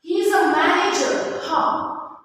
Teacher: declarative question is a statement which is asked in the rising tone